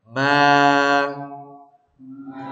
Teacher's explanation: memang mimnya masih hidung tapi lepaskan setelah itu rongga saja